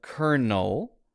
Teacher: make sure your lips aren't closed try to touch your tongue just behind your top teeth and release Air through your nose